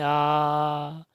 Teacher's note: आ विवृत होता है सबसे ज्यादा मुख खुलता है